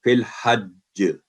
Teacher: کیونکہ تشدید ہے تو سخت وہ کلکلہ ہوگا، سخت کلکلہ بھی یہ قسم ہے فی الحج.